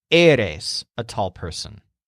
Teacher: eres has two syllables. The stressed syllable is the first one, which sounds kind of like air.